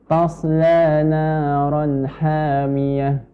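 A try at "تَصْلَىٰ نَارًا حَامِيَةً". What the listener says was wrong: Ta kita bahas tadi, ta tipis ya. Jangan sampai menjadi tebal karena shad yang tebal. Jadi tetap ta, bukan to.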